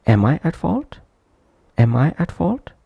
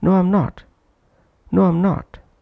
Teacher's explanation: Second am is weak form, that's why not pronounced prominently.